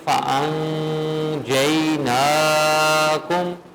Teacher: ٹھیک ہے، بتائیں کہ اکفا کا قاعدہ لگے گا اور اس قاعدے کے مطابق اگر حروف اکفا سے پہلے یا یوں کہہ لیں کہ نون ساکن یا نون تنوین کے بعد حروف اکفا میں سے کوئی ایک حرف بھی آ جائے تو وہاں پر اکفا ہوگا، نون کی آواز کو چھپائیں گے اور غنہ کریں گے